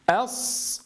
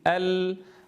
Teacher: الأول منهما رخو وهو الصاد والثاني منهما بيني وهو اللام فلا بد أن نميز بينهما في الزمن